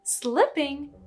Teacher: If you pronounce it E instead of eh, people will think you're saying sleeping, which is a totally different word.